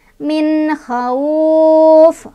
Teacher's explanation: Wa amanahum min kha, min kha izhar karena nun sukun bertemu dengan huruf izhar halki ya, izhar yang berasal dari tenggorokan, bacanya jelas nunnya min, jangan mine, jangan dipantulin, jangan ditahan